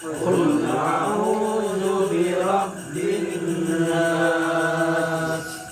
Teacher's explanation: N-nya, nas-nasnya itu N-nya di agak lama yang tahan dulu ya. N-nya seakan-akan 2 dia.